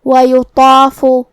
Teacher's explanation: تو ہم طا کو اور مد الف کو دونوں کو بھاری آواز میں ادا کریں گے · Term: تفخیم